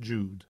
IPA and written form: dʒuːd (Jude)